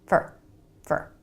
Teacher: Really fast with a reduced vowel, fur, fur.